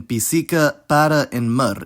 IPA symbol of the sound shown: ə